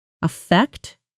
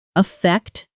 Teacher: Affect, verb, stress on the second syllable. Affect, noun, stress on the first syllable.